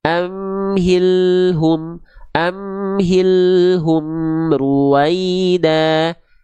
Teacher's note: jangan sampai dibaca amhil hum enggak tapi al-nya terus ngalir sedikit